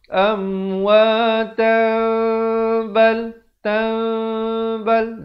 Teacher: bunyi tanwin ataupun nun ditukarkan kepada bunyi mim yang nipis, bibirnya hampir bersentuhan saja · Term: iqlab